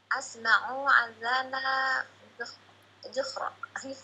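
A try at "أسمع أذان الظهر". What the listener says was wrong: Dengan dzuhr. Kalau disukunkan bukan dzuhr. Dzuhr itu fathah jadinya.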